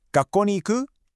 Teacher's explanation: We ditch the ka, and we add that rising tone at the end, so it turns into 学校に行く?